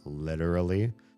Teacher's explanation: the T sounds like a D, the way most Americans say literally